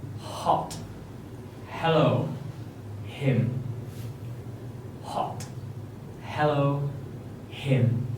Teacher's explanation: It is voiceless, so no vibration from here, and is made with your mouth wide open and no obstruction of the air, but your tongue slightly raised at the back as you push the air out from your throat.